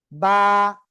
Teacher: আমরা সামনে যাচ্ছি তাহলে ওয়াও টা ক্লিয়ার করলাম এরপরে কি বা দুই ঠোঁটের ভিজা অংশ থেকে